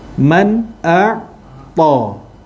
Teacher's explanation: Man a'ta, nun mati. Tengok nun mati ada tanda mati. Petanda bacaan tu tak boleh dengung. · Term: izhar halqi